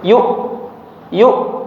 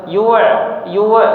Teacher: Ya, ingat huruf hamzah sifat ee sifatnya syiddah ya. Jadi langsung putus